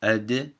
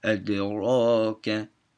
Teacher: the word adraka has a qalqala on the D, ad, and then ra, that's thick in Hafs. So it's adraka, like Laylatul Qadr.